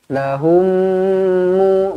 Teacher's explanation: Qala lahum Musa, lahum mu, mim kosong bertemu dengan mim sabdu, idgham mithlain, didengungkan 2 harakat, dimuncungkan, dirapatkan bibir. Jumpa dengan mim sabdu, rapatkan bibir.